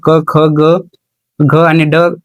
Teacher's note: क, ख, ग, घ आणि ड कंठातून उच्चारले जातात